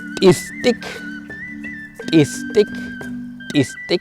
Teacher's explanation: La T con apóstrofo lo pronunciamos pegando la lengua nuevamente a los dientes de arriba, así. Se suelta.